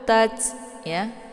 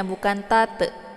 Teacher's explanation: Ada desis anginnya bukan tat. Jadi jangan dipantulkan hurufnya tetapi didesiskan angin. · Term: ta sukun